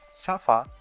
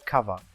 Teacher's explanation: To produce F or V, the soft palate is raised so that no air goes through the nose, and all of it is forced through the mouth. The bottom lip is very close to the upper front teeth. This forms a narrowing, and when the air is pushed through this narrowing, it causes slight friction. Since these sounds have friction, so we will call them fricatives.